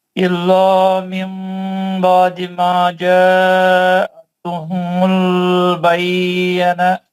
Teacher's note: من بعد میں جو غنہ ہے وہ 2 حرکت کا ہے. ماجا کا جو مد ہے وہ 4 حرکت کا ہے